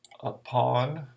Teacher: So like the word upon, the on is going to be stressed. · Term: stressed syllable